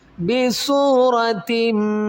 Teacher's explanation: بی سورا زبر را، بی سورا، تا میم دو زیر تم، دو زیر کی تنوین کے آگے میم ہے، حروف یرملون میں، یہاں پر ادغام مال غنہ کریں گے